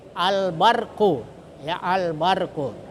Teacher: Nah, berarti dibaca jelas. Ya, jadi huruf lamnya itu harus dibaca jelas, yaitu dengan sukun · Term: izhar qamariyah